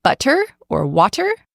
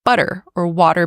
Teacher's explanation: Now these T's can sometimes sound like flap T's, so like soft D's, which if you're familiar with American English pronunciation rules, you know that our T's sound like flap T's or D sounds when they appear between vowel sounds